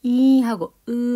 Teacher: 혀의 최고점의 위치가 앞에 있다는 거야. 이하고 으 하면 이가 혀의 최고점이 좀 앞에 있대. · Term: 전설 모음